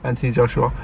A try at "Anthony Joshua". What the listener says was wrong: Anthony Joshua. said anti. Anthony Joshua.